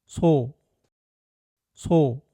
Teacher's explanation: in Korean, the tongue naturally rests near the lower gums and doesn't block the air much, so the sound flows out gently between the teeth and feels much softer. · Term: Korean S